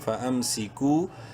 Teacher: واو مدہ ہے، کاف کو ایک الف کے برابر لمبا کریں گے